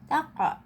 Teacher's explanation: Ingat harus memantul dan bersuara o. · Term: qalqalah